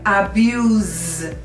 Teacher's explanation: on the end of a word so a word like abuse the s makes a z sound because it's between two vowels